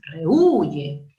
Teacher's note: el acento no está en la E, está en la U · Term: hiato acentual